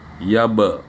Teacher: Ba kita ketemu kalau di sukun ya dipantulkan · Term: kolkolah